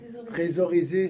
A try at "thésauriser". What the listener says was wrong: Trésor, mais on dit thésauriser.